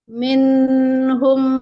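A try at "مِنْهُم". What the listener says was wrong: Nah, nun sukunnya tidak. Nun sukunnya tidak. Nun sukunnya hanya guna nakisah saja. Minhum ma.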